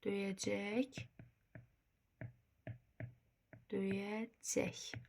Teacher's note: sonda xışdırıqla tələffüz olunacaq